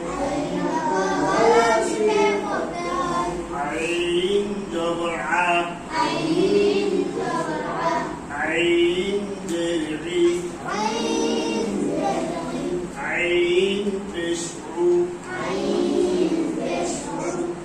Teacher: কণ্ঠনালী চেপে, গলা চেপে আদায় করতে হবে। আইন উপর গলা চিপে পড়তে হয়।